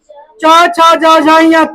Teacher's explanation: च छ ज झ य तालु से होता है।